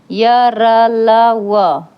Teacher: य र ल व भी जो है अल्पप्राण ध्वनि है